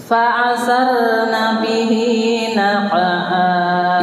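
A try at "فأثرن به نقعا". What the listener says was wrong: Ibu itu kesudah ke nyebelah hurufnya ain hamzah tuh fa'a fa'asa hamzah jangan ain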